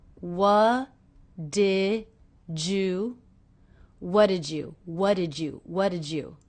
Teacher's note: a J sound here jew-jew what did you did jus so the D and the Y here are combining to make the J sound